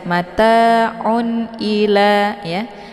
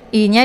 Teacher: Jadi cukup ditekan saja kemudian langsung masuk ke i ya. I-nya dibaca pendek ya, la dibaca panjang. Ini ada harokat fathah berdiri tegak. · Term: mad tabi'i muqaddar